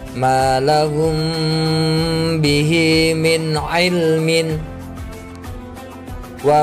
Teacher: Ikhfa safawi itu adalah ketika mim sukun bertemu huruf ba. Cara bacanya itu harus dengung, dengan berdengung.